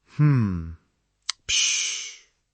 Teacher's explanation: Low sustained tone, then the snap. · the first part fills time and lowers the pitch, and the final part is a clean punctuation. You can make the clipped part quieter if you're around teammates.